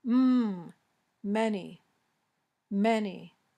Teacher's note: the M sound is voiced your vocal cords are vibrating